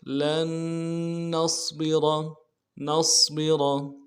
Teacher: تو دوسرا نون کو صاد کے ساتھ ملانا ہے، صاد کو موٹا کریں گے، با کو نرمی سے ادا کریں گے اور را کو موٹا کریں گے۔